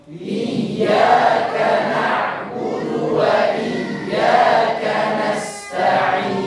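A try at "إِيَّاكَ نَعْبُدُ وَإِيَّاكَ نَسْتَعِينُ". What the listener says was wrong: Ya, sip.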